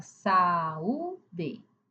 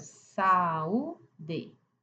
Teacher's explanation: Agora, iato, são cortado, separam-se, ou seja, são vogais que na escrita estão junto, mas na fala separa. Aqui a boca precisa abrir duas vezes para falar duas vogais a um salto na voz.